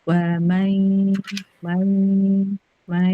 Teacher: ditahan di hidung, dialirkan di hidung selama dua harakat. Jangan buru-buru.